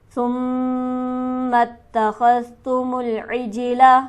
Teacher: ثم کے میم پر ہم کریں گے غنہ، کیونکہ میم مشدد ہے جو کہ ہمیشہ غنہ سے پڑھا جائے گا، اور اس میم کو ہم تا سے ملا دیں گے.